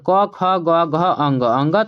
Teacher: क से लेकर क ख ग घ अंग अंग तक जो है यहाँ पर आपको कंठ से ही आवाज आएगा। अंग तक आप कंठ से ही बोलेंगे बच्चों।